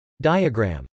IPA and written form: dˈaɪəgr.æm (diagram)